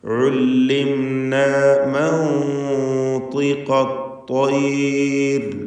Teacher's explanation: സക്കനത്ത് നൂനിനെ ഇഖ്ഫാ ചെയ്യണം. ഇഖ്ഫാ ഹഖീഖി, അവ്യക്തമാക്കി മണിക്കുക. മണിക്കലിൽ തഫ്ഖീം വേണം. ശേഷം തഫ്ഖീമിൻ്റെ അക്ഷരമാണ്, ഇസ്തിഅലാഇൻ്റെ ഹർഫായതുകൊണ്ട്.